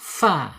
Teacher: Kemudian sifatnya di alhams ya mengalir mengalir napas atau udara. · ujung gigi seri atas menyentuh perut bibir bagian bawah, atau sebaliknya perut bibir bagian bawah menyentuh ujung gigi seri bagian atas